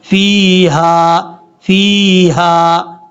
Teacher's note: لہم فیہا، فا کے بعد جو یا ہے یہ یا مدہ ہے، اس کو لمبا کریں گے. ہا بھاری ساؤنڈ کے ساتھ پڑھا جائے گا، اس ہا کی آواز سینے سے آئے گی. فیہا فیہا، اس طریقے سے.